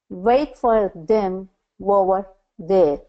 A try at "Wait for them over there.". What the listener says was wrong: Okay, so I heard them wover instead of over. So you're adding kind of a W sound in there. Wait for them over there.